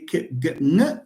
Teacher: you know, the tongue does not move anywhere, which means that they have the same place of articulation. They are all velar consonants.